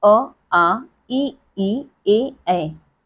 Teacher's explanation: होठ गोल नहीं होते, अवृत्तमुखी